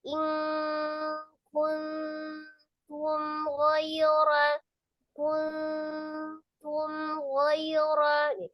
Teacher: Ada mim sukun itu dia tidak dibanting atau tidak naik karena tidak juga ditekan, tidak juga ditahan, tidak juga terlalu dilepas. Karena mim itu kan tengah-tengah, tawasud atau bainiyah ya.